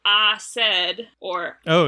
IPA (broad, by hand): aː sεd